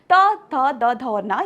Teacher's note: ता वर्ग में आने वाले प्रत्येक व्यंजन का उच्चारण स्थान होता है दंत।